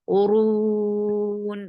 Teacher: ra will be heavy, 4 counts long, and give the wasut at the end because you are giving sukoon, temporary sukoon.